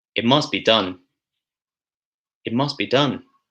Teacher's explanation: So when the t and the d sounds come before a consonant sound, they're often elided. so in other words, they're often cancelled.